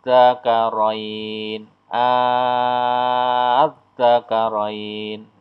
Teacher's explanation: Bila hamzah yang bermakna bertanya ketemu dengan hamzah wasal yang ada dalam alif lam ma'rifat. Ini disebut dengan mat farqi, cara bacanya panjangnya 6 harokat.